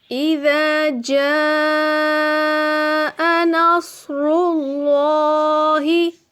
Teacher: صاد کو موٹا کر کے پڑھنے کے بعد اللہ کے نام کو باریک نہیں بلکہ موٹا پڑھیں گے کیونکہ یہاں پر اللہ کے نام سے پہلے پیش آ رہا ہے۔